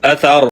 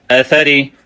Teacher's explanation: زبر ثا زبر ثا اث، را زیر ری اثری، وقف اثر، اثر کا را وقف میں پر پڑا جاتا ہے اور وصل میں باریک پڑا جاتا ہے